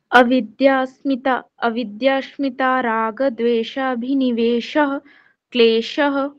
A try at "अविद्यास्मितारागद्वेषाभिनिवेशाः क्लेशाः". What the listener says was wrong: बहुत बढ़िया जी, बहुत बढ़िया।